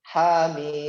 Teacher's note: mimnya 6 harokat ya, panjang